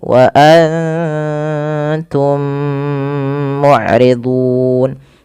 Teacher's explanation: Karena mim mati bertemu dengan mim, itu ada bacaan idgham mimi, dan caranya adalah kita menahan bunyi mimnya.